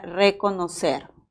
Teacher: recordemos nada más que es un vibrante simple porque también hay vibrante múltiple